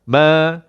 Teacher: Ma ni dua harakat. Lambatkan sikit.